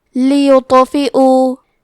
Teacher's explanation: کلمت لیطفئوا میں لام کے نیچے زیر ہے، پھر یا پہ پیش ہے تو ہم یہ دونوں حرکات کو ظاہر کریں گے۔ حرف الطو حروف التفخیم میں سے ہے تو ہم یہ حرف کو موٹی آواز میں پڑھیں گے، اور کیونکہ اس پہ جزم ہے تو یہاں تو کا حکم ہے قلقلہ، تو ہمیں حرف الطو کو ہلاتے ہوئے یہ کلمہ کو پڑھنا ہے، لیطفئوا۔